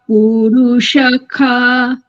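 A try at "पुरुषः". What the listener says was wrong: পুরুখাহ মূর্ধন্য সকারটাকে সেলফ খকার বলতে হবে পুরুখাহ রেখা ক্ষয়াকার মূর্ধন্য সকার ইজ ইকুয়াল টু খ এটা মনে রাখতে হবে পুরুখাহ পুরুষখাহ নয়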